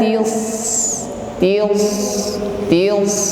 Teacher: ada suara desis ya yang keluar dari ujung lidah